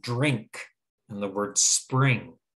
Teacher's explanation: instead of making a short i it actually makes the long e sound